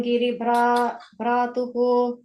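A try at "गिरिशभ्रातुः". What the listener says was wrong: The first line should be the Girisha Bhratuhu. I didn't hear the Sha sound. Girisha Bhratuhu.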